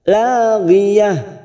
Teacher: Ujungnya kita rem lagi tak marbutoh di sini. Walaupun berharokat fathah tanwin, tetapi ini bukan mat iwad, ya. Mat iwad selain tak marbutoh. Ini tetap dibaca pendek.